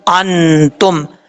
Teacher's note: نون ساکن ہے, نون ساکن کے بعد تار ہے حروف اخفا میں سے, یہاں پہ نون ساکن کا اخفا ہوگا